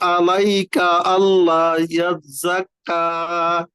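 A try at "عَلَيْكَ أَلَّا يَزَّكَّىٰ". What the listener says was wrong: আমাদের আর কি আইন আর আলিফ কিন্তু সিমিলার হয়ে যাচ্ছে, হ্যাঁ। ভিতর থেকে আলাইকা আল্লাহ, এমন যেন না হয়। যতটুকু আসে চেষ্টা করো ভিতর থেকে আনার, আলাইকা আল্লাহ।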